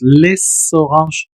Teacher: pegó la s con la siguiente o